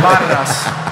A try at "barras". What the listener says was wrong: Estás pronunciando mal la R. La R es con la lengua en los dientes de abajo.